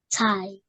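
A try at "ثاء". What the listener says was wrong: So don't add H sound in it. Just tai.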